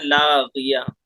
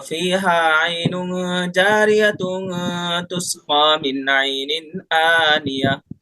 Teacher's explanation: رکیں گے تو ہا بنائیں گے، ملا کر کے پڑھیں گے تو تا باقی رہے گا